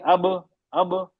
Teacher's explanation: आवाज नाक से निकलती ही नहीं है।